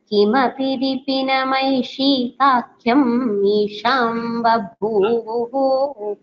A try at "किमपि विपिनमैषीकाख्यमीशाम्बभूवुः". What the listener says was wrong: Don't stop at ईशीकाख्यम् That is not required there. ईशीकाख्यमीशाम्